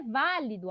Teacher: A sílaba mais forte é o vá. Então é uma proparoxítona.